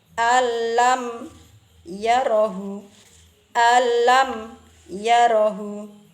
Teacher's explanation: Nunnya kan sudah tidak terasa, sudah lebur menjadi satu suara lam, tetapi tidak disertai dengan dengungan. Saya ulang sekali lagi. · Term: idgham bila gunah